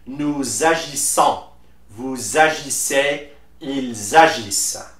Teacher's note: And also for the pronunciation of the plural personal pronouns, we just need to make la liaison. That means we link the last S of the personal pronoun with the first vowel of the verb and convert that se sound into ze